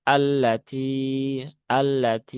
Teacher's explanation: lam bertasdid ini jangan lama-lama menahannya